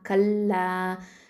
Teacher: காஃப் அப்படிங்கிறது வந்து அக்கசல் லிசான் எழுத்து, அடி நாவு எழுத்து